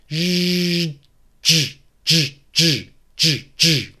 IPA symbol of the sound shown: dʒ